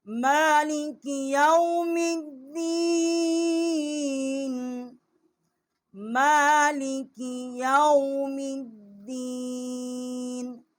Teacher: میم کے اوپر کھڑا زبر ہے، ایک الف جتنا، یہاں آواز بلند کی ہے